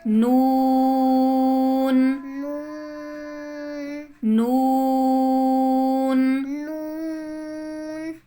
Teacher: जुबान की नोक को जुबान की नोक को ऊपर वाले चार दांतों के मसूड़ों से लगाकर अदा होता है।